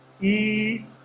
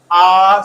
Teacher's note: they are produced without rounding the lips the lips are not rounded at all